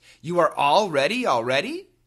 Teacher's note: when we say it as 2 words, there's a little bit more emphasis on all.